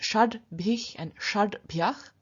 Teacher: What we get is in the nominative, vocative, accusative, the sh turning into t, so we get shat. Then in front of a voiced stop, this sh changes into d, so we get shad bhich and shad bhyach.